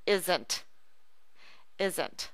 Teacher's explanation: when the S makes the sound as z z it changes it from an aspirate to a subvocal remember an aspirate creates a release of breath on your hand